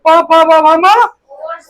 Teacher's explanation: प फ ब भ म होठ से होता है।